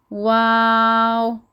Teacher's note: ہونٹوں کو گول کرتے ہوئے ہم اس کو ادا کریں گے